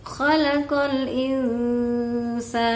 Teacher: Harusnya dengungnya agak panjang sedikit, ya. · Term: dengung ikhfa